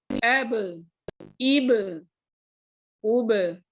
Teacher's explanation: سانس آواز روک دینی ہے, اور ساتھ میں ہے قلقلہ. قلقلہ مطلب باؤنس.